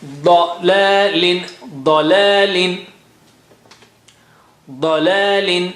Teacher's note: Don't make la also thick or high. Just la. Come down.